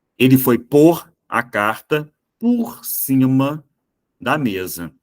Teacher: quando eu falo pôr como preposição acaba saindo o som de u · quando eu falo por como verbo ele é mais forte eu falo com som de o mesmo mas quando eu falo pôr como preposição acaba saindo o som